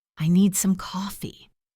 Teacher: the stress on the word need